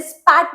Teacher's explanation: वहीं में अगर मैं स्पैट बोलती हूँ तो प्रॉपर प की आवाज आ रही है, जिसको हम लोग बोलते हैं अनएस्पिरेटेड, मतलब कि वो बिल्कुल भी वहां पर एच की साउंड या थोड़ी सी भी घ की साउंड आपकी वहां नहीं आएगी.